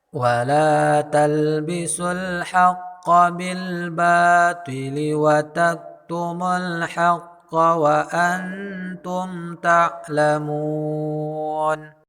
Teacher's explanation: Pada bacaan la terdapat hukum mad tabi'i, panjangnya 2 harkat